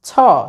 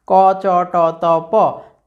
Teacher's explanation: ওকে, মহাপ্রাণধ্বনি, অঘোষ মহাপ্রাণধ্বনি, ক চ ট ত প, চ এর পরে ছ, ওকে। ছটা হলো অঘোষ মহাপ্রাণধ্বনি, চ হলো অঘোষ অল্প প্রাণধ্বনি